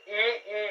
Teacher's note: ई, इसका उच्चारण स्थान तालु है